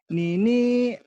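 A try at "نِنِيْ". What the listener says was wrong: Nini, jangan ditekan nih ya. Nini, yang kedua yang ditekan yang panjang. Yang jadi panjang itu ditahan atau ditekan. Nini gitu.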